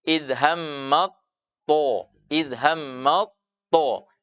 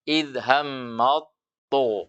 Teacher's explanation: Makhrajnya ya ujung lidah dengan pangkal. Tapi ketika ta bertemu dengan to, maka makhrajnya huruf ta, sifatnya huruf ta, semuanya akan diidgham, akan dileburkan ke dalam huruf to, sehingga tidak ada lagi suara-suara ta.